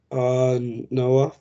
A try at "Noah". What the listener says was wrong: No, you can't break between and Noah.